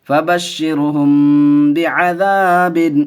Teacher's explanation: میم ساکن کے بعد با آیا، گنہ کر کے پڑھیں گے